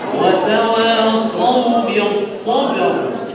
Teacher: sob tebal, bak tipis diapit oleh dua huruf yang tebal